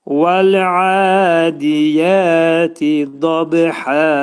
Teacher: Vəl-adiyəti deyəndə vəf hərfi dodaq qönçələnir